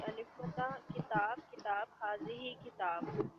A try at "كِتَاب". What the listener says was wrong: कोशिश करें कि थोड़ा सा अलिफ को लंबा करें।